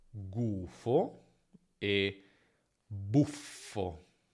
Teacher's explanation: Vediamo ora le doppie. Essendo suoni continui, la doppia qui si realizza allungando semplicemente il suono.